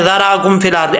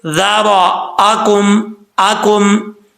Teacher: حمزہ کو اسکپ کرنے، یعنی حمزہ کو چھوڑنے سے بچنا ہے آپ نے۔ اکثر لوگ پڑھتے ہیں ذراکم فی الارض، ایسا نہیں کرنا، بیچ میں یہ حمزے کی آواز ہی نہیں آئے گی، پھر معنی چینج ہو جاتا ہے۔